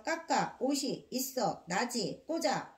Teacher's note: 모두 형식 형태소이기 때문에 받침을 제 소리값으로 뒤에 오는 모음의 첫 소리로 발음한다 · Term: 연음